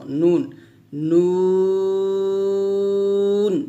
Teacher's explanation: 9 নং মাখরাজ জিহ্বার আগা তার বরাবর উপরের তালুর সঙ্গে লাগিয়ে নুনটা স্বাভাবিকভাবে উচ্চারণ করব, নুন, নুন এভাবে আমরা নুনটা উচ্চারণ করব।